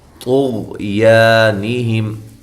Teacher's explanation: تو کو موٹا کریں، غین کو بھی موٹا کرنا ہے لیکن قلقلہ نہیں کرنا ہے۔ یا الف مدہ ہے۔